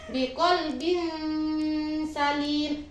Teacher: Nah, sini suara tanwin jika bertemu dengan huruf sin dihukumi bacaan ikhfa. Ikhfa di sini artinya samar.